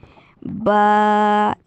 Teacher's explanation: जो आपके होंठों का गीला हिस्सा है, अंदरूनी खुश्क नहीं, अंदरूनी गीला हिस्सा, उन दोनों होंठों को आपस में मिलाने से बा अदा होगा